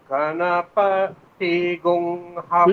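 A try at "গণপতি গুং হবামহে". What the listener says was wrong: পকারে নিচে নামাতে হবে, আপনি পকারে উপরে ওঠাচ্ছেন, পকারে নিচে নামাতে হবে, নকারে উপরে উঠাতে হবে।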